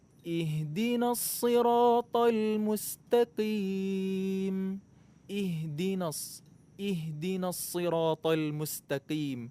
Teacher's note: Huruf H makhrajnya di pangkal tenggorokan, bukan di dada. Enggak ada huruf dari huruf hijaiyah, dari huruf-huruf Al-Quran yang makhrajnya di dada.